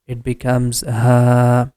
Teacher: we have to make the ha sound for 2 count because of letter alif